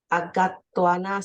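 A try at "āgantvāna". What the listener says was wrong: Agan, agan. That's N here. Agan.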